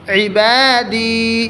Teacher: عین حلق سے ادا ہوتا ہے, عین حلق کے بیچ سے, حلق کے بیچ سے.